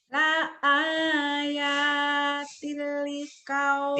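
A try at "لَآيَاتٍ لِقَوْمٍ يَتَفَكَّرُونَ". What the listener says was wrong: Tinggalnya ditahan juga. Ibu keburu-buru la ayatil liqaum. tilnya itu memang idgham bila gunah tidak ditahan, tapi pengucapannya sempurna.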